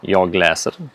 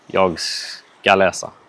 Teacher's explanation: there is a falling tone through läser, the present tense, and then a falling-rising tone on läsa, the infinitive.